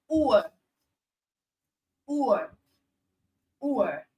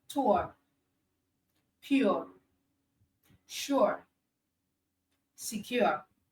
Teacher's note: So that's the combination of the short U sound plus the schwa sound. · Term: diphthong